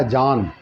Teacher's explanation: जान जो लिखा है ये नून जो है पूरे तौर से साफ है